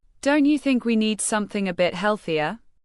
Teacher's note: the rising intonation invites agreement, gently encouraging reconsideration without forcing it.